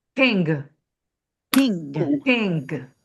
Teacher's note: So king with a hard G at the end.